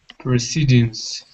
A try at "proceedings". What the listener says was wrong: Yeah, remember that the prefix is pro, and it's pro. So make sure you say pro, not pre. So proceedings.